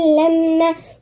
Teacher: والميم حرف غنة مشدد